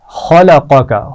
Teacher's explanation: خلقک، خا موٹا پڑھا جائے گا، قاف موٹا پڑھا جائے گا، اور قاف اور کاف دونوں اس لفظ میں اکٹھے آ رہے ہیں.